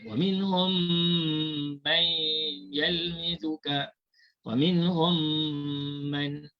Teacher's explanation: mim mati yang pertama itu dimasukkan ke dalam mim yang kedua, maka hanya tinggal satu sahaja bunyi mim. Tinggal satu saja bunyi mim. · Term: Idgham mislain